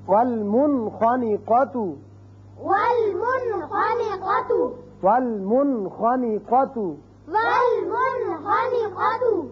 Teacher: اب آخری جو حرف تھا حروف حلقی میں سے وہ ہے خا. نون ساکن کے بعد اگر ایک کلمے میں آئے تو یہاں اس کا اظہار ہوگا